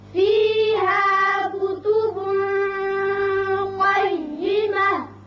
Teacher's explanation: تنوین کے بعد قوف ہے جو حروف اخفا میں سے ہے، یہاں اخفا کریں گے. قیمتن ہے لیکن یہاں وقف مطلق بھی ہے اور آیت بھی ختم ہوتی ہے، تا کو ساکن کر کے پڑھیں گے قیمہ.